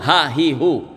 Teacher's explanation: ha itu makhrajnya dipangkal tenggerokan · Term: makhrajnya di pangkal tenggorokan